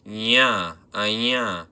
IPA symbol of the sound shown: j̃